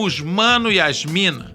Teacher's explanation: que falam os mano e as mina, sem colocar o S ao final das palavras